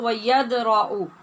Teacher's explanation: یہاں پہ دال ساکن ہے اور اس پہ ہم نے قلقلہ کرنا ہے